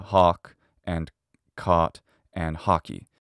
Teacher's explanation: do people have the cot caught merger uh they'd sound the same · the rounded version, which is aw, has been unrounded and has merged with ah